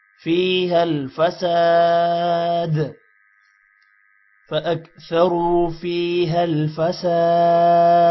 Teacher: سین کے بعد الف ہے تھوڑا سا لمبا ہوگا اور دال پر قلقلہ ہوگا